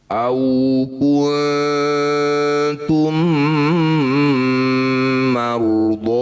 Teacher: Cara bacanya bo ini panjangkan 5 harokat atau 5 ketukan. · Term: mad jaiz munfasil